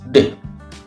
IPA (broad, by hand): d